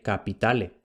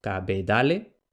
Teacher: las oclusivas sordas intervocálicas, pasan a ser oclusivas sonoras. Entonces lo que en latín era P, en una etapa posterior será B. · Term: sonorización de oclusivas sordas